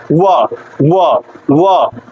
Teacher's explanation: व का जो उच्चारण है दंत और ओष्ठ मतलब दांत और ओष्ठ दोनों से हो रहा है। व व इसमें जो है थोड़ा यह ओठ जो है जुबान इससे टच हो के बाहर की तरफ आ रही है। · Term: दंत ओष्ठम